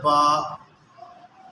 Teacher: یہ با ہونٹوں سے ادا ہوتا ہے، تو یہ ہونٹ جب آپس میں ملیں گی تو اس سے ایک حروف با ادا ہوگا، ٹھیک ہے؟ تو یہ مخرج ہے ایک با، یہ مخرج ہے۔